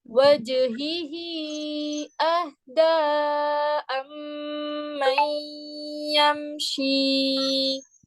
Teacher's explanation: وجہ ہی, اس کو آپ 3 کاؤنٹس کھینچیں گے. اس مد کو بھی 3 کاؤنٹس کھینچیں گے آپ, ٹھیک ہے.